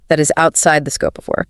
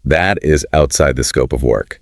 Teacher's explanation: The upward inflection seeks validation. The downward inflection states an immovable fact. The pitch dropping at the end of the sentence is the iron hand.